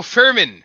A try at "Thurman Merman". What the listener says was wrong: TH, I think.